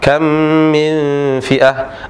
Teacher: Kalau huruf mim bertemu dengan mim, dia dibaca dengan disertai gunnah, idgham disertai gunnah.